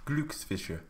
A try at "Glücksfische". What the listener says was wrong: Why are you doing a glue? It's gl. Glücks.